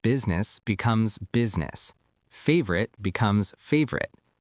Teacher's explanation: We cut the middle vowel. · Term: dropped syllables